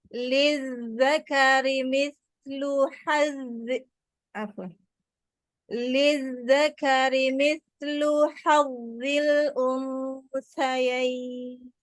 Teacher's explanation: Zalnya lebih rokhwah. Lizzakari sa-nya juga lebih rokhwah. Jadi jangan berhenti-berhenti suaranya.